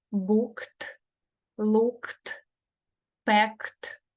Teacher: коли закінчення ось це читається як т то есть глухо читається не дзвінко